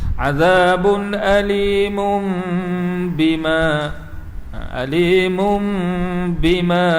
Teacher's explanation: Dengung dua harakat, kita dengung tu pada makhraj mim. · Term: iqlab